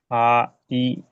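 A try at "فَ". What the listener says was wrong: এই ফায় কিন্তু টান পড়ে গেছে খবরদার, মোটেও টান পড়তে পারবে না, ফা, ই।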